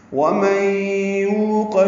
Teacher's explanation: نون ساکن کے بعد یا آنے کی وجہ سے ادغام ناقص